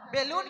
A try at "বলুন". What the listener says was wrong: বেলুন নয় বলুন। এমন করেই বলছো কেন? উষা নিচে আবার কি বলো, উচ্চারণ হয় না।